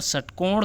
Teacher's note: यहाँ पर षटकोण का स जो है वो मूर्धा से उच्चारण होता है दोस्तों